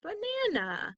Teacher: an open A in an unaccented syllable will change to schwa, as in the word banana. So an A at the end of a word is always going to say the sound, which is the schwa sound.